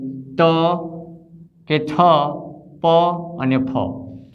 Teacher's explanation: જે વ્યંજનનું ઉચ્ચારણ કરતી વેળાએ આપણી નાદતંત્રી એટલે કે સ્વરપેટીમાં થતું કંપન એટલે કે ધ્રુજારીનું પ્રમાણ ઓછું હોય તેવા વ્યંજનને અઘોષ વ્યંજન કહેવાય છે।